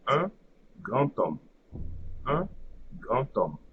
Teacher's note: So here we have D, the silent D, and then we have for the beginning of the second word we have H, which is the silent H. So the liaison won't be between the D and the H, but instead between D and the vowel coming after H. So in this case, it will be O.